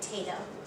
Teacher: for a child with weak syllable deletion, they would omit the po and pronounce the word tato.